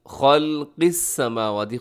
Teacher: قاف موٹا رکھیے گا، اس میں خا بھی موٹا ہے اور قاف بھی موٹا ہے